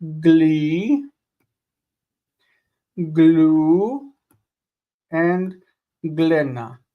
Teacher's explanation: We lengthen the last vowel.